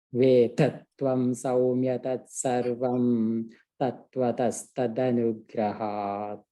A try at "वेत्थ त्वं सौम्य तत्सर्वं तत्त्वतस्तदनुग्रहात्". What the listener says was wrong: In Vitha, the th can be better.